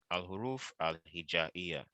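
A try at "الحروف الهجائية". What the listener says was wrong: All right, perfect.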